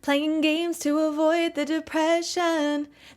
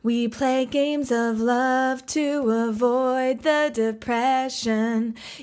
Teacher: every single syllable is stressed. It's the only part in the song that this happens, and when you do that, it draws a lot of attention to it.